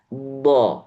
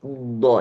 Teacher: Sifat istitolah itu ada suara yang ditarik ketika sebelum dilepaskan huruf bo-nya. Bagaimana caranya?